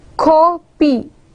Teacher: We are stressing the first syllable and we are not stressing the second syllable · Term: stressed syllable